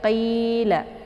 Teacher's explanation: Jadi qi ya, bukan kila, tapi qila. Qi dibaca panjang karena ada ya sukun sebelumnya berharakat kisrah. Ya sukun sebelumnya berharakat kisrah itu dinamakan dengan mad tabi'i.